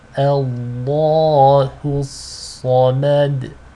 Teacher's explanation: The Hamza is light, but the lam here is heavy because it is preceded by a fatha.